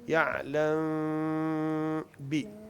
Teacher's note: मीम की आवाज को हमने छुपाना होता है।